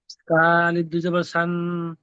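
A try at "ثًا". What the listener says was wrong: না, সান, এই যে সান গুন্না করছে, নাকে উঠে যাচ্ছে আওয়াজটা, ওটা হবে না। সান, পড়েন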